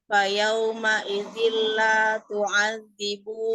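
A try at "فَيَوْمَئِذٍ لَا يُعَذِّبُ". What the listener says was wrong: You. You. Bukan tu.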